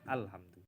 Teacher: ketika kita mulai memulai suatu kalimat dengan Hamzah wasal ya maka Hamzah wasal tersebut dibaca dengan jelas